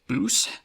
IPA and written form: bush (bush)